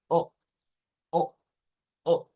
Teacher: este es un sonido de una O glotal o con un glottal stop. Es un sonido como O, O, que se corta.